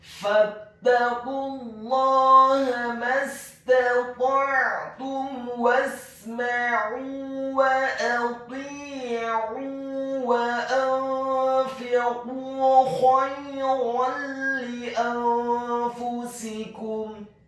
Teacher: huruf qaf-nya dibaca tafkhim tebal, dhammah cukup satu harokat saja karena setelahnya langsung disambung ke huruf lam yang tasydid dan fathah dua harokat karena harokatnya tegak.